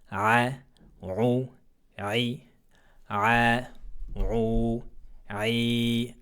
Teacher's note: Il faudra monter l'arrière de la langue pour rendre cette lettre emphatique.